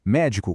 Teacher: Médico com a força na primeira sílaba e com acento é a profissão.